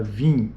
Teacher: isso é um I nasal não é um I oral o i oral é i e o i nasal é in